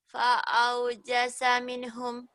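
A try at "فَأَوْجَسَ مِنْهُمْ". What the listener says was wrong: jangan buru-buru. Fa'aujasa minnya selesaikan dulu. Ya, tidak boleh ditahan, tapi tidak boleh cepat. Minhum.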